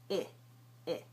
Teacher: The tongue comes high in the mouth and the tip of the tongue is particularly close to the gum ridge. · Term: high front vowel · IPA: /ɪ/